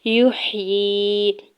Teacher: یا کے پیش کو ح ساکن کے ساتھ ملانا ہے، یا کے نیچے کھڑی زیر دو حرکت کھینچ کے ادا کریں گے